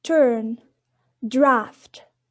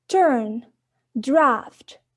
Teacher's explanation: In the second case, the sounds t in turn and d in draft, the oral passage is blocked by pressing the tongue tip against the alveolar ridge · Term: oral stop